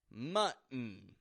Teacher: pronouncing the word mutton, or recognizing the glottal T therein